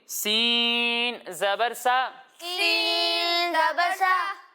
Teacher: جب ہم سین کی ادائیگی کریں گے تو اسے باریک پڑھیں گے، اس میں سیٹی کی آواز آئے گی